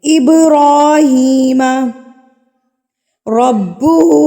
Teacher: را کے اوپر کھڑی زبر ہے تو کھڑی زبر کو ہم 1 حرکت کے برابر کھینچیں گے